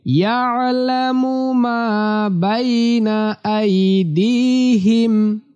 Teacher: এই আইনটা কণ্ঠনালী বা হলকের মাঝখান থেকে উচ্চারিত হবে।